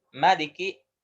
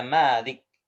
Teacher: Ada Maliki, ma-nya nggak panjang ya. Maliki, ada Malik. Ya, ada yang ma-nya panjang. Yang kita pakai itu Malik, ya, yang ma-nya panjang.